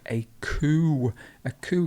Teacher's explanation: got a silent p we don't say the p so it's coo